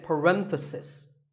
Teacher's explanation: The stress is on ren.